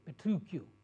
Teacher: In the Italian language, they pronounce it with a hard CH, that's K